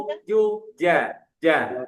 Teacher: ketika nanti mengucapkan huruf jim, ja itu nggak boleh ada angin yang keluar. Kalau ada angin keluar, berarti salah nanti cara mengucapkannya karena dia jahar bukan hamas.